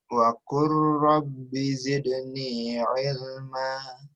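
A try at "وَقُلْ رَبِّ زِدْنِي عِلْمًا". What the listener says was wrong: Ya, emaknya 2 harokat, jangan lupa itu mat iwad. Jangan sampai terlalu ilma, kependekan ilma, gitu. Panjangin dulu 2 harokatnya.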